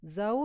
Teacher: زوجن غیرہ، زوجن، زو ہمارا واو لین ہے، زو تو واو کے اوپر راؤنڈ لپس پورے کر کے جانا ہے